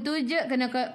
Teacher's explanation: Tuj kena melantun, lantunannya kecil.